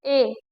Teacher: जिसमें आधा मुंह खुलता हो उनको हम अर्ध संवृत में रखेंगे